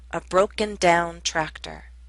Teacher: Both parts are stressed, but the second receives more stress.